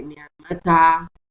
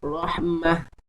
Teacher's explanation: We have to read it as ha sakina and not with ta with alif mad · You know, we already said when we want to stop on that down, it should be read as ha, a ha with sukun and not ta with sukun. Even if it is now having tanween, the rule is also not going to be applicable.